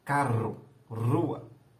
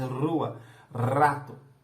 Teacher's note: Tá vendo? Eu vibro a ponta da língua, faço um trill com a ponta da língua, né? No alvéolo, logo atrás do dente. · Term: vibrante alveolar